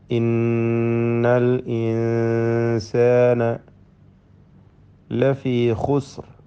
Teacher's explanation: ഖാ തഫ്ഖീമിൻ്റെ അക്ഷരമാണ്, ഇസ്തിഅലാഇൻ്റെ ഹർഫുകളിൽപ്പെട്ടതാണ്, പെരുപ്പിച്ചുച്ചരിക്കണം.